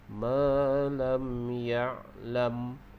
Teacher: Manakala huruf mim di hujung kita waqaf dengan merapatkan bibir.